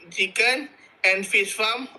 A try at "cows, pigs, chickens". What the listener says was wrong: Okay, there is an S at the end of the word, so you don't say cow, pig, chicken. You say cows, pigs, chickens.